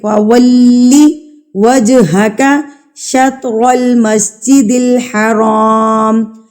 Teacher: فَوَلِّ وَجْهَكَ شَطْرَ الْمَسْجِدِ الْحَرَامِ، شطر، طا کے اوپر بھی سکون کی علامت ہے، اس لیے ہم یہاں پر قلقلہ کریں گے۔